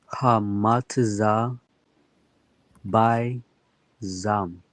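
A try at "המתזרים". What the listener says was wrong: Hamataza, and then this third letter here, this is a Ra.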